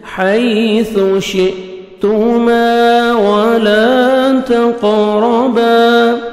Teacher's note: واو پہ لپس کو راؤنڈ میں لے کے جانا ہے. واو تاکہ اچھی طرح ادا ہو.